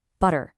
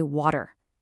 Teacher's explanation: The D sound is just a little softer, a little faster, and it keeps the sentence flowing.